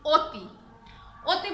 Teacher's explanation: অ এর সংবৃত উচ্চারণ ও এর মতো হবে, ও এর মতো হবে, ও এর মতো।